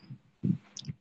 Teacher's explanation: ঠোঁটের সঙ্গে ঠোঁটকে শক্তভাবে না মিলে একেবারে আলতোভাবে লাগানো, বা বলতে পারি যে সর্বনিম্ন একটা ফাঁকা রাখা দুই ঠোঁটের মাঝে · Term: মিম সাকিনের ইকফা